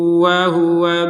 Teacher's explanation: ternyata ini adalah tanwin bertemu dengan wau maka dimasukkan disertai dengungan 100%